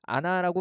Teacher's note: 아나라고 발음하게 되고요. 자음 히읗이 탈락하게 됩니다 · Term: 히읗 탈락